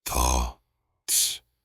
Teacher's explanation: The first one is unvoiced, meaning you only use air, no voice. We call this the soft th.